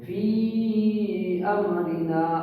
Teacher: دوسرا کلمہ کے شروع میں حمزہ آنے کی وجہ سے مد منفصل نام ہو جائے گا. تو مد منفصل میں اس کو حرف مد کو کھینچا جائے گا. کتنا؟ 2.5 الف کے برابر. فا کو کھینچو گے فی امرنا.